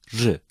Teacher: Ra is pronounced when the edges of the tongue touch the upper central incisors. It is pronounced strong or weak, depending on the next vowel.